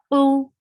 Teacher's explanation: You are using the root of your tongue and it is engaged with soft part of your upper palate.